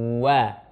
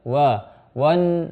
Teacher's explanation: Waw itu huruf tipis. Cuman memang ketika menyebutkannya posisi mulut kita dari depan. Wa. Nah, sebagian kita kadang-kadang menarik mulutnya ketika huruf waw itu tidak sempurna sehingga wawnya ditebal.